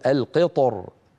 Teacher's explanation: كان يفخم الراء مراعاه لحرف الاستعلاء الملاصق للراء فيقول القطر وبعض العرب كان يرققها من اجل الكسره التي قبل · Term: التفخيم